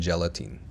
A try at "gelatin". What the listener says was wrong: Gelatine? The word is not pronounced gelatine. It's pronounced gelatin. The last syllable, the last vowel, is not the long E like green beans. It's the short I like this is. It's more open. Not E, but I, gelatin. So again, not gelatine, but gelatin. This is gelatin.